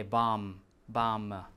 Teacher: notice that we don't pronounce a b